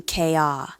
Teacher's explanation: Car loses its final R sound, becoming KR.